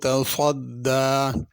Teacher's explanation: तसद्दा में स्वाद है, पुर करके पढ़ना है। तसद्दा सीन नहीं पढ़नी।